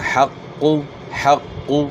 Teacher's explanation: قاف کو آپ نے موٹا کرنا ہے، قاف موٹے حروف میں سے ہے، اور شد کو آپ نے خوب جماؤ کے ساتھ ادا کرنا ہے، یعنی نرم آواز کے ساتھ، یعنی حق کو نہیں پڑھنا، حق حق۔